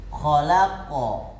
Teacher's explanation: kita berhenti. Maka dia ada huruf qalqalah di belakang yang harus kita pantulkan. Pantulan ini lebih besar. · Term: pantulan-pantulan besar